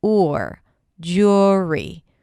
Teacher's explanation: We start with a J sound, and then it's the or, as in pour. It's not an U sound. It's not an O sound. It's somewhere in between. · We start with a /dʒ/ sound, and then it's the /ʊr/ as in poor. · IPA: /ˈdʒʊri/